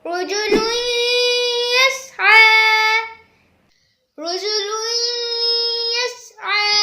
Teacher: اس میں تنوین کے بعد یا آ رہا ہے، یعنی غنہ کریں گے کیونکہ یہ را اور لام میں سے نہیں ہے۔